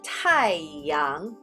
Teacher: The word for the sun is 太陽. So go down the fourth tone, comes up on the second tone.